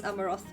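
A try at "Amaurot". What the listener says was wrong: No, and also there's no H in Amaroth. It's not Amaroth.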